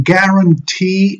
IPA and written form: ˌgærənˈtiː (GUARANTEE)